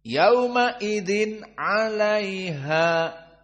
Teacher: yaumaidin bertemu dengan Ain maka Apa hukumnya Idhar sehingga dia tidak ada Idgham dan dibaca dalam keadaan cepat